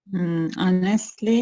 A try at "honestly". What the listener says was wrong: Honestly, not honestly. See, put the stress on the first syllable.